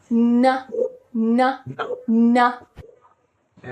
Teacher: এটাও না নাসাল, উপরের জিহ্বাটা লাগবে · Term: না সাউন্ড